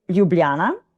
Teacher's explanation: we say Ljubljana with all the J's that we pronounce as Y's